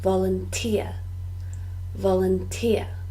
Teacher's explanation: the stress is on the third syllable, volunteer, volunteer.